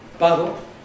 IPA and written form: ˈbɑɾɫ̩ (bottle)